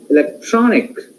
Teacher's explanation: Here, electronic, tron is stressed syllable.